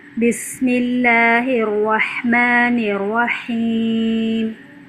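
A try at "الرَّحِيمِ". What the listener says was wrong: رحیم ایسا لگا جیسے را کی شد ادا ہی نہیں ہوئی ہے۔ مضبوطی لانی ہے، دباؤ دینا ہے تکرار کو کم رکھتے ہوئے۔ بسم اللہ الرحمن الرحیم۔ ہم مد عارض وقفی میں توسط کریں گے اور اسی طرح مد منفصل، مد متصل سب میں توسط ہوگی۔ چلیے۔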